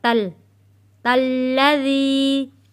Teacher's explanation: تا جڑے گا تشدید والے لام کے ساتھ